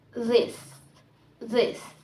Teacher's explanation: Dental consonant made by placing the tongue against the upper teeth